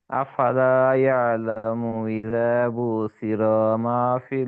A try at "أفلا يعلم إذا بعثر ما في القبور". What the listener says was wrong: আইনের মাখরাজ ধরবেন, আইন। ইয়ালামু ইযা বু'সিরা, এই আইনের মাখরাজ ধরেন।